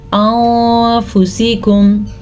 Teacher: اخفا میں چھپانے کے ساتھ ساتھ غنہ بھی ہوگا